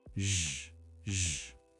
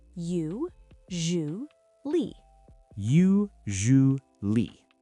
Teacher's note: It's a difficult pronunciation because of the S sound. It's not an S like snake. It's a zh sound, like measure or vision. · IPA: /ʒ/